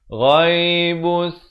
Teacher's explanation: Ghain makhrajnya di hujung kerongkong.